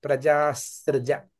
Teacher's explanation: ఆ విసర్గని ఆ సృజాలో కలిసిపోతుంది అన్నమాట కలిసిపోయి ఒక సకారాన్ని ఎక్స్ట్రా తెచ్చుకుంటుంది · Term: దంతియ సకారాన్ని